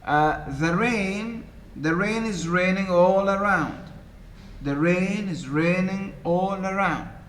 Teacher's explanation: Iambic meaning there are 2 syllables in the foot, and the second syllable is the stressed one. So the first foot, the rain, 2 syllables, the and rain.